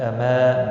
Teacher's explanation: الف مدہ ہے، ایک الف کے برابر کھینچ کر پڑھیں گے